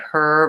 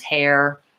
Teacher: words like her versus hair shouldn't sound the same and hair is much longer and has the multiple vowel sounds in it